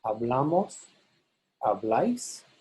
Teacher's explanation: In the nosotros and vosotros, the bla is stressed. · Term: stressed syllable